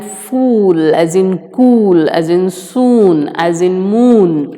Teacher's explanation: The lips are fully rounded, so it is known as back close rounded vowel. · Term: long U